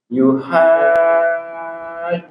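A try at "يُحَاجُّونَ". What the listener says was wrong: Nah, huruf jim usahakan jangan mendesis. Yuhajjuna. Juna.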